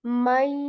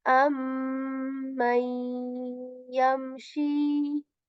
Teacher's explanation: This is just this composition here, noon sakin, and after ya, this is the rule of idgham. My, skipping the noon sound but keeping the nasal